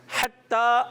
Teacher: ہا حرف حلقی میں سے ہے. ہا کی ادائیگی جو کلیئر ہونی چاہیے. ٹھیک ہے. حلق کے درمیان والے حصے سے. حتی تا مشدد ہے, تشدید والا ہے.